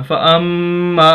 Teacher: فَأَمَّا میم کی آواز کلیئر ہو رہی ہے ناک میں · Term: غنہ